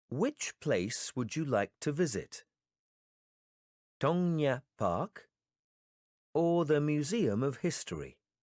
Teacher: in the sentences with a lot of choices we will use the rising intonation for the first choices then we will use the following intonation for the last choices